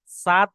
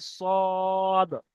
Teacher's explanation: তারপরে আমরা বলবো সদ, তিরালি পরিমাণ টান, এবং তার সাথে এখানে স্টারের চিহ্ন আছে, অর্থাৎ এই সদকে পুর করে পড়তে হবে, মুখ গোল করে পড়তে হবে। সাদ পড়লে হবে না, সদ।